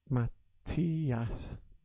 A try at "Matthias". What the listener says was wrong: No, it's got the emphasis on the E. Matthias.